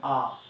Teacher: জিহ্বার অবস্থান একেবারেই সম্মুখও না পিছনেও না, মাঝামাঝি অবস্থায় থাকে, এবং জিহ্বার উচ্চতা একেবারে আ, একেবারে দেখেন জিহ্বাটা নিচের তালুকে স্পর্শ করে থাকে।